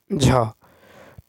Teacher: तालव्य, महाप्राण, घोष, व्यंजन वर्ण का उदाहरण